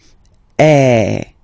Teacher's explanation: the sound that you will have to produce is e so it's really open I mean the sound is really open and normally your mouth should be opened a little bit more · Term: the open one